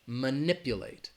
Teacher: It's on that second syllable, that NIP.